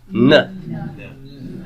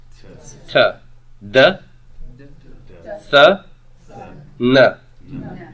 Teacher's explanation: Is your tongue in the same place? It is, because nu is a dental nasal. And because it's a dental, it's going to fall out before the sigma.